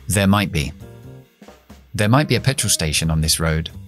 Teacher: No desaparece esa T. Tenemos que cerrar, parar y explotar la B.